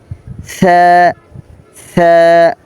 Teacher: জিহ্বার আগাটা সামনের উপরের দাঁতের আগার সাথে লাগবে